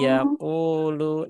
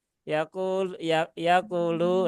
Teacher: tetapi ini waw mat ya. Jadi tetap dibaca dua harokat.